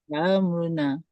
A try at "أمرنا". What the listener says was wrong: Itu kau copek je tu. Itu terkucil bunyi dia tu. Jangan. Ja'am am.